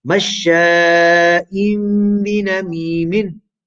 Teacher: So you have a tanween before a ba, change the tanween into meme, conceal it into the ba, and observe gunna. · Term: iqlab